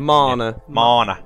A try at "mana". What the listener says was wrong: There's no R in it.